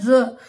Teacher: यह दंत मूल से बोला जाता है जब हम इसको बोलते हैं तो हमारी भी जीवा जो है वह दांत के जड़ों वाले हिस्से को स्पर्श करती है